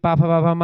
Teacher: ओष्ठ व्यंजन प फ बोलिए ओठ आपके टच करते हैं।